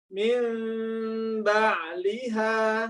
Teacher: Nggak tahu ya, Pak Kiai dulu ditanya ya, bukan masalah bibir siapanya, tapi lihat bentuk bibir ketika praktek iklab, ya, kedua perut bibir bertemu, ya, tapi tidak dikatupkan secara kuat atau rapat, yaitu ringan-ringan saja.